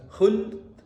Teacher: dialirkan lamnya baru disukun dalnya